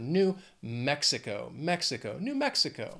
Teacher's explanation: New Mexico four syllables again the stress is on that first syllable of the second word